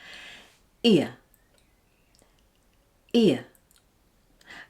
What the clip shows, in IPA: ɪə ɪə